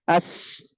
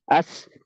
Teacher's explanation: sifatnya ada hams karena dia mendesis ya Ada sisa suara atau sisa nafas